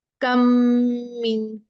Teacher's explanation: इन दोनों को मिला देंगे, इदगाम कर देंगे, और मीम पे तशदीद आ जाएगी।